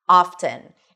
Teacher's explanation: the T is actually pronounced, something that we don't see in fasten or listen